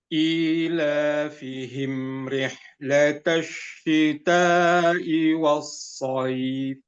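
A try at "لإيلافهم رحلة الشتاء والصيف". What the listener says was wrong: Oke, pertama haknya lebih diperjelas nafasnya itu, ya. Tapi haknya itu udah tipis bagus, tinggal dipanjangkan lagi.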